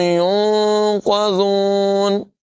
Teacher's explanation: ذال میں سیٹی کی آواز پیدا نہیں ہونے دیں گے۔ يُنقَذُونَ زون نہیں پڑھیں گے۔